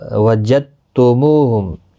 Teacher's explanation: وجدتموہم، دال ساکن نہیں پڑھا جائے گا کیونکہ آگے مشدد حرف ہے، تو وجدتم وجدتموہم سختی کے ساتھ پڑھیں تاکہ تشدید ظاہر ہو. مو واو مدہ ہے، ایک الف کی مقدار کے برابر کھینچ کر پڑھیں.